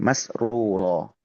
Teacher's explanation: Masrurah di sini huruf r-nya itu tebal gitu kan ya. Huruf ro yang domahnya juga huruf ro yang fathahnya itu tebal dua-duanya